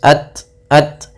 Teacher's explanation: Kemudian pelafal ta sukun. Dia memiliki sifat syiddah dan sifat hames. Yaitu yang pertama suara ditahan ya. Kemudian alirkan nafas.